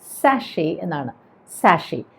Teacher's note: അവിടെ ആ T silent ആണ്, അതുകൊണ്ട് സാഷേ എന്ന് മാത്രം പറഞ്ഞാൽ മതി